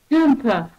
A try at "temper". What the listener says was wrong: So you've got to get that T at the beginning. Temper.